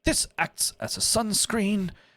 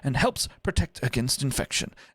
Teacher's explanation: he kind of goes up on the inflection there and helps protect against infection and he comes back down again so it's like a little mountain